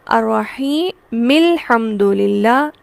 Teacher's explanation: میم کو میں نے ڈائریکٹ لام سے ملایا، میں نے الحمدللہ نہیں پڑھا۔ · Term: حمزہ وصلی